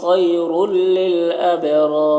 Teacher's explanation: خیر میں یا لین ہے، یہاں پر تو یا کو جلد پڑھیں گے نرم آواز کے ساتھ. رل یہاں پر تنوین کو لام سے ملا کر پڑھیں گے بغیر غنہ کے، اس کو ادغام تام کہتے ہیں، ادغام تام. · با میں قلقلہ ہوگا اور یہ دونوں را کو پر پڑھیں گے